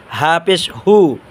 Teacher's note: হা পেশ হু হবে গলার শুরু হতে